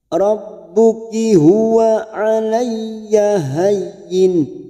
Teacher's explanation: Ya yang bertasdid hanya masuk tanpa ditekan lama-lama.